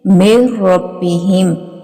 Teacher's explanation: میم کو را کے اندر مدغم کر دیں گے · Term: ادغام